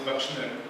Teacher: Bakshner is the plural form, but in fact, the schwa here phonetically has the back value